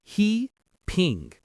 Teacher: The stress is on that first syllable, he.